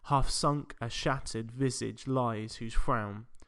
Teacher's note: You've probably heard about pentameter which means that each pair of syllables goes unstressed stressed